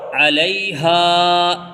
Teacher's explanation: یہاں پر ہا کھینچے گا کیونکہ الف مدہ آیا ہوا ہے